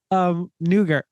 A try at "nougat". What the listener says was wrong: There's no R in there. It's nougat. Yeah, nougat, not nougat. Nougat.